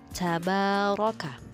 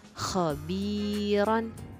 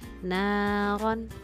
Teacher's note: Ro tafkhim adalah ro yang dibaca tebal